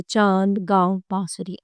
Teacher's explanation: अंग के उच्चारण में हवा नाक और मुंह दोनों से निकलती है। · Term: अनुनासिक स्वर